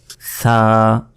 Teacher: জিহবা বের করে জিহবার আগা সামনের উপরের দুই দাঁতের আগার সঙ্গে লাগিয়ে এই সা অক্ষরটি উচ্চারিত হয়